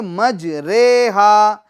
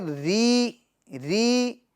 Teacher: امالہ کی جو را ہے وہ اردو کے قطرے کے رے کی طرح پڑھیں، یعنی ری نہیں پڑھیں گے بلکہ رے پڑھیں گے